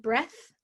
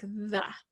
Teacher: your voice is off for one of the th's like breath and it's on for the other th like the a lot of the same strategies that we talked about with · The TH, which I know is not present in all of the languages that are represented, but the TH, you have your tongue between your teeth, smooth air over your tongue. Your voice is off for one of the THs, like breath, and it's on for the other TH, like the.